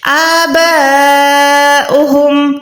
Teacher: اس کے بعد بال زبر با کو کم سے کم آپ نے 4 سیکنڈ کھینچنا ہے، 4 سیکنڈ لمبا کرنا ہے کیونکہ یہاں پر بڑی مد ہے